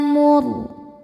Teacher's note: ra sukun dibaca secara tafkhim karena sebelumnya dhammah. Cara bacanya ra ditebalkan.